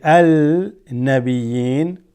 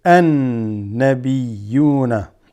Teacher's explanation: Huruf Shamsiya. Where the alif lam, we don't say al-nabiyyin, nabiyun, right? We're going to say an-nabiyuna.